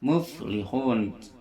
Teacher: yang bersentuhannya adalah bibir bawah dengan gigi seri bagian atas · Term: fa